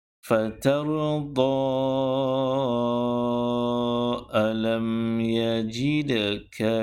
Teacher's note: Perhatikan pada kalimah fatarudha, saya wakaf dengan kadar 2 harakat. Andainya kalau kita baca sambung antara fatarudha dan kalimah ataupun ayat alam yajidka, maka bacaannya perlu dipanjangkan dengan kadar 4 ataupun 5 harakat